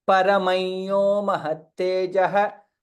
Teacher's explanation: Once, while what you chanted was correct, the better way of pronouncing is, since Anuswara is followed by Yakara in all the places, we chant as Paramayyo mahattejah.